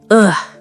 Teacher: the schwa is a lazy sound. It sounds like ugh. It is very short and very weak.